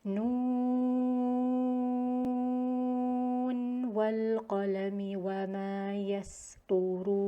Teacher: So in continuation, the noon would be read clearly without idgham. So there is no idgham between the noon and the waw. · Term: idhar